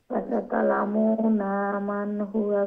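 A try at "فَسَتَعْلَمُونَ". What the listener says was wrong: ফাসাতালামুনা পেশের পরে ওয়াও সাকিন লং হবে এখালিফ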